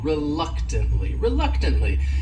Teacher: this word has four syllables and the stress is on that second syllable